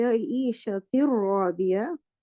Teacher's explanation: The noon has merged into the ra. Okay? And there is no sound of the noon. You cannot hear the gunna. You cannot hear the sound of noon. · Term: complete merging